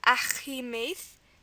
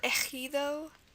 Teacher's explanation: guttural K sound. Ugh, it's coming from the inside of your throat. So you're going to use a J here.